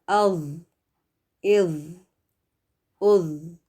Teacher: از، از، از، یہ زوا نہیں ہے، کچھ لوگ بولتے ہیں زوا، یہ زوا نہیں ہے اور نہ ہی زا ہے، جو را کے بعد آتا ہے نا زا، یہ ذا ہے، اور اس کو موٹا پڑھا جائے گا، اور اس میں کوئی بزنگ ساؤنڈ، کوئی ہسنگ ساؤنڈ جیسے زیڈ یا ایس میں ہوتی ہے نا، تو وہ آواز نہیں آنی چاہیے